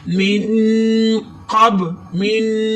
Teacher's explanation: ناک میں آواز لے جا کر گناہ کریں گے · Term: اخفاء